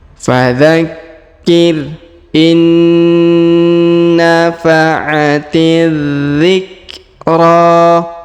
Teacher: Huruf na yang pertama, yang nun sukun ini, menghilang melebur ke huruf na yang bertasdid ya. Jadi tidak dibaca in nafa ya, tapi dibaca in langsung ya.